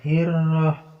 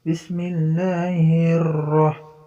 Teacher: ketika ro bertasjid, kita agak tekan ro-nya. Hirrah. Jangan terlalu hirrah gitu ya.